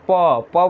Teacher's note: दोनों ऊपर नीचे ओठ जो है सट जाता है, जिसके कारण उसे ओठा से व्यंजन वर्ण कहते हैं, प वर्ण को।